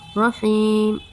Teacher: الرحیم، را کو پر پڑھیں گے، یا ساکن سے پہلے زیر آیا ہے اس لیے یا مدہ ہوگا، یا مدہ کو ہم ایک الف کے برابر کھینچ کے پڑھیں گے